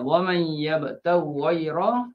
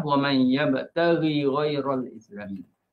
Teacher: ada baca dengan idgham waman yabtaghi ghayra dan ada izhar macam hafsah waman yabtaghi ghayral islam